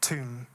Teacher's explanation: the push of compressed air released by the plosive T, tomb, being described as a soft blasting.